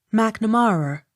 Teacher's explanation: Accent on third syllable.